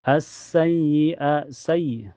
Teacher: Karena alif lam ketemu huruf syamsiyah yaitu sin. Cara bacanya langsung masuk ke sin. Alif lamnya tidak terbaca. Jadi hukumnya alif lam asyamsiyah.